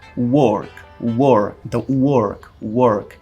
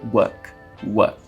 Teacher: No inglês britânico eu diria work, work. Então esse R ele não vai ser pronunciado, ele vai ser suprimido.